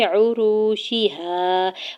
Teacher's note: واو ساکن سے پہلے را کے اوپر پیش واو مدہ ہو رہا ہے، الف سے پہلے ہا کے اوپر زبر الف مدہ ہو رہا ہے۔